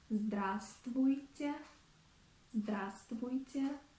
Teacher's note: in the word здравствуйте, здравствуйте, we do not pronounce V letter